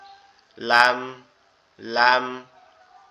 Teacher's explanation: এর পরেরটা হচ্ছে লাম। জিহ্বার আগা উপরের তালুর সঙ্গে লাগবে, লেগে উচ্চারিত হবে লাম